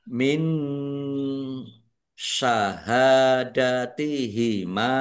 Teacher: Nun sukun bertemu dengan huruf shin, bacaan ikhfa dibaca samar-samar